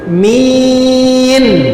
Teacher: Mi, sebut mi panjang baru tarik nun, min, gitu.